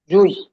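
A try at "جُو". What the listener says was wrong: টান দেবেন তো, জি মও পেশ জু।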